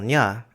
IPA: ɲ